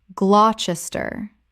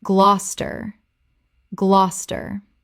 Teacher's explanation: Two syllables only. The middle syllables disappear completely.